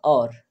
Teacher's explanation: तो जीभ जाके तलवे को टच हो रही है, ठीक है, और नहीं, होठ आपके दोनों बंद हो रहे हैं और कंठ पे जोर पड़ रहा है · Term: कंठोष्ठ ध्वनि